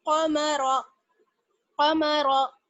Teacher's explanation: قاف کو موٹا پڑھیں گے, را کو موٹا پڑھیں گے, میم کو باریک